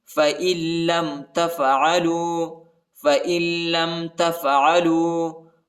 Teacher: لَّمْ تَفْعَلُوا وَلَن تَفْعَلُوا، حمزہ کو لام کے ساتھ ملانا ہے، نون نہیں پڑھا جاتا کیونکہ لام کے اوپر شد آیا ہے